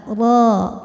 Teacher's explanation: Huruf ra juga dibaca secara tafkhim karena harokatnya di atas, maka ro-nya tebal. Ro, penuhin rongga mulutnya ya.